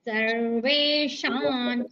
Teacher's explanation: షాకి దీర్ఘంతో పాటు తర్వాత వస్తున్న సున్నాకి ఇనీని పలుకుతున్నాం అందుకే షాన్ అంటున్నాం